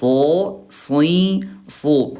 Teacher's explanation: Kalau so dia tebal diangkat pangkat lidahnya